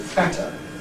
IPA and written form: ˈfætə (fatter)